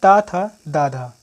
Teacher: त, थ, द, ध ये क्या है? दंत व्यंजन है।